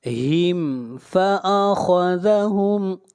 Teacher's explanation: ہم یہاں پر میم کو ظاہر کر کے پڑھیں گے، یہاں پر اظہار شفوی ہوگا، اس لیے کہ میم ساکن کے بعد نہ میم ہے اور نہ با ہے۔